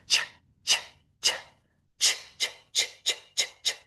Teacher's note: Your vocal cords did not vibrate. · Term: CH sound